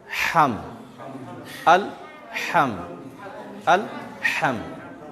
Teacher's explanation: मीम के ऊपर जज़म है तो वहाँ आवाज़ रुक जाएगी। सुकून इसीलिए बोलते हैं कि वहाँ ठहर जाए आदमी।